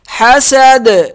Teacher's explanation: ح زبر ح، سین زبر س حس، دال زبر د حسد حسد، وقف حسد. یہاں قلقلہ کر دیں گے دال پہ اوپر جب وقف کریں گے